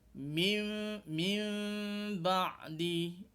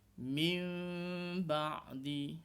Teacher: Okey, mim tu, dan waktu kita sedang sebut mim tu, bibir antara atas dengan bawah ni tidaklah tertutup rapat. Dia terbuka sikit je. Mim, senang kata mim yang nipis lah sebutannya tu.